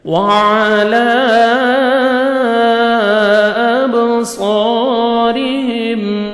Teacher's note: حروف قلقلہ میں سے با ہے، ڈبل ساؤنڈ آئے گا